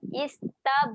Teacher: huruf ba ketika mati. Okay, sifatnya ada lantunan.